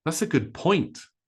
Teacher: Very short, very quiet, but point becomes loud and long.